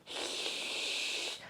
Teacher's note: se a borda da língua tá elevada escapa ar pelas laterais E aí o que que acontece se escapar pelas laterais faz aquele som chiado